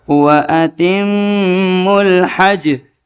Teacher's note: جیم کے اندر قلقلہ نہیں کرنا ہے، اس لیے کہ جیم کے اوپر جزم نہیں ہے بلکہ جیم کے اوپر زبر ہے